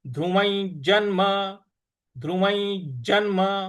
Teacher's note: व के ऊपर जो अनुस्वार है उसका उच्चारण हमें ञ के ञ की तरह से ले आना है। ध्रुव जन्म ध्रुवै जन्म ध्रुवै जन्म ज के बाद जो आधा न है उस पर आघात देना है।